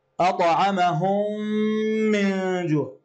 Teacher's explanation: الميم كأنها الميمان كأنها ميم واحدة مشددة في مع غنة، والغنة مخرجها الخيشوم ومقدارها حركتين. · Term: الإدغام الشفوي